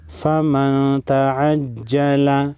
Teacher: نون ساکن کے بعد تا ہے. حروف اخفا میں سے تا ہے. اخفاء حقیقی ہوگا.